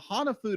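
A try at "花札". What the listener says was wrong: You said Hanafudu. Hana. Ha. Na. Fu. Fu. No, it's Hanafuda.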